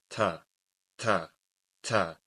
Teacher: the tip of the tongue is between the gum, the upper gum, and the incisors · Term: ta